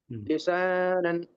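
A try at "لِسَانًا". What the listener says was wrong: सीन को जो है ना साफ पढ़ना है, लिसानन। सीन को आप थोड़ा सा शेप बना रहे, शेप नहीं बनाना है, साफ सीन, लिसानन।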